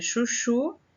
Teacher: Chuchu, a sílaba tônica está na última sílaba, então a sua classificação é oxítona.